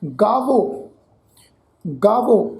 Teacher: ਇਹ ਜਿਹੜਾ ਹਾਹਾ ਅੱਖਰ ਹੈ ਨਾ ਜੀ, ਹਾਹਾ ਸਵਰ ਇੱਥੇ ਜਿਹੜਾ ਵਰਤਿਆ ਹੋਇਆ ਹੈ, ਇਹ ਹਾਹੇ ਅੱਖਰ ਦੀ ਜਿਹੜੀ ਟੋਨ ਆ ਇਹ ਇਸ ਅੱਖਰ ਦੇ ਨਾਲ ਮਿਲ ਵੀ ਉਚਾਰਨ ਹੋਵੇਗੀ। ਇਹ ਹਾਹਾ ਅੱਖਰ ਪੂਰਾ ਉਚਾਰਨ ਨਹੀਂ ਹੋਏਗਾ, ਇਹ ਹਾਹਾ ਅੱਖਰ ਇੱਥੇ ਅੱਧਾ ਸਵਰ ਉਚਾਰਨ ਹੋਏਗਾ ਤੇ ਇਹ ਵਾਵੇ ਅੱਖਰ ਦੇ ਨਾਲ ਜਿਹੜਾ ਹੈ ਮਿਲ ਕੇ ਉਚਾਰਨ ਹੋਏਗਾ। ਜਿਵੇਂ ਗਾਵੋ, ਗਾਵੋ ਇਹ ਜਿਹੜਾ ਵਾਵਾ ਅੱਖਰ ਹੈ ਜੀ, ਤੁਸੀਂ ਦੇਖੋ ਇਸ ਵਾਵੇ ਅੱਖਰ ਦੀ ਜਿਹੜੀ ਟੋਨ ਆ, ਜਿਹੜੀ ਸਾਊਂਡ ਆ, ਇਸ ਹਾਹਾ ਸਵਰ ਅੱਖਰ ਨੇ ਜਿਹੜੀ ਹੈ ਅੱਧੇ ਸਵਰ ਅੱਖਰ ਨੇ ਜਿਹੜੀ ਆ ਉਹ ਕੀ ਆ ਜੀ ਉਹਨੂੰ ਭਾਰਾ ਕਰ ਦਿੱਤਾ ਵਾ।